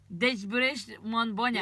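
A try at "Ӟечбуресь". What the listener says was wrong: Нет, не ды Дечбуреш, а Джечбуреш.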